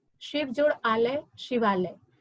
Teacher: कोई भी व्यंजन वर्ण बिना स्वर वर्ण के उच्चारण के उच्चारित नहीं किए जा सकते, इसलिए अंतिम ध्वनि यहाँ पर अ है और दूसरे शब्द का आ है। अ और आ मिलकर शिवालय बना। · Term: स्वर संधि